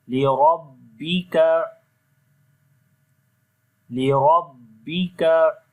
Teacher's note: After that fasalli li rabbika, this ra also we read in heavy sound due to fatha sign on the ra